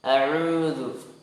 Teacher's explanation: huruf ain dari tengah tenggorokan pindah ke dhammah, pindah ke waw sukun. Jadi huruf ainnya terlepas ya dari tengah tenggorokan, kemudian pindah.